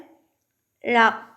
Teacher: நாவின் இரு பக்கங்கள் தடித்து மேல் பற்களின் அடியை தொடுவதால் தோன்றும் எழுத்து